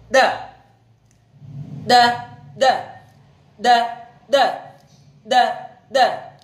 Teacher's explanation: Dal punya sifat istifal, lidah turun, termasuk huruf tarqiq atau tipis. · Dal punya sifat nafas ditahan, atau dalam ilmu tajwid disebut sebagai jahar atau jahrun. Suara ditahan, syiddah. Kemudian qalqalah, kuat ketika diucapkan.